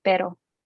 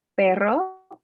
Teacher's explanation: very short tap on the roof of your mouth versus the longer trill. Those are the two R's.